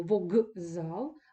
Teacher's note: з - це дзвінкий приголосний який впливає на попередній глухий приголосний і одзвінчує його до того звука який з ним в парі виступає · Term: асиміляція за дзвінкістю